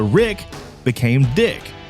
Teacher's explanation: To create a rhyming nickname for Rick, the initial R sound was replaced with the D sound resulting in Dick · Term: rhyming nicknames